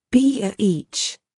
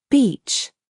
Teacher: it's important to stretch the e sound in beach